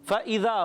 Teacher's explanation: فا اوپر والے دانتوں کے کناروں سے اور نیچے والے ہونٹ کے تر حصے سے ادا ہوتا ہے، حروف شفویہ سے تعلق رکھتا ہے، یہ آپ سے پوچھا جائے گا، یاد رکھنا ہے۔